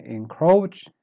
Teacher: start weak and then you go up